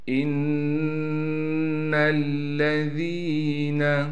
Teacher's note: ان الذین، حمزہ کو نون سے ملائیں گے، اس لیے نون سے ملائیں گے، نون پر تشدید ہے اور تشدید ہونے کی وجہ سے نون پر غنہ کیا جائے گا، اور نون کو پھر ہم آگے لام سے ملائیں گے، لام پر تشدید ہونے کی وجہ سے تھوڑا ٹھہراؤ بھی کریں گے، اور لام پر زبر کو پڑھا جائے گا بغیر کھینچے۔